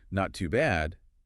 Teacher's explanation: If I say not too bad, with an enthusiastic lift, it means good.